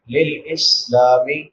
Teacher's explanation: سین سیٹی کے ساتھ ادا ہوگا. لام کے بعد الف مدہ ہے، الف سے پہلے زبر ہے تو اس کو ایک الف کے برابر لمبا کریں.